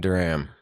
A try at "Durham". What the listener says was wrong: Durham. Silent H. It's just a silent H. Yeah, Durham. Silent H.